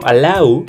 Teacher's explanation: Por ejemplo, allow, a pesar de que termina con W, suena como una U